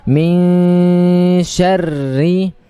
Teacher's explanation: Nun mati bertemu shin, ikhfa, ya, didengungkan suara, ditahan, agak dilamakan sedikit